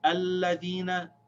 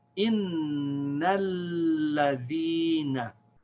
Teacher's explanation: this first one has the Hamza al-Wasl as the first letter, so we say alladhina. In the second example, the Hamza al-Wasl is silent because it's not the first letter